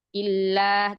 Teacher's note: huruf lamnya jangan ke hidung